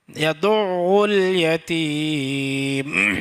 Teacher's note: اور یہاں پہ یدعو میں بہت سارے بھائی ایسے کرتے ہیں، یدعو الیتیم بول دیتے ہیں، یدعو الیتیم بولتے ہیں، یہ بالکل غلط ہے، کیونکہ یا کے اوپر زبر ہے، دال کے اوپر پیش ہے، عین کے اوپر تشدید ہے، اس کے بعد پیش ہے، تو دال کو عین کے ساتھ ملائیں گے، تشدید ہے